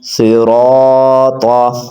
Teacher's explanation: را کے اوپر زبر ہے، اگر را کے نیچے زیر ہوتی تو ہم نے را کو باریک پڑھنا تھا، اب زبر ہے تو ہم نے موٹا پڑھنا ہے۔